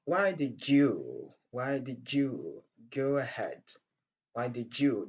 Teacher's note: nous avons l'assimilation qui va nous donner le son j. La rencontre du son d et du son y.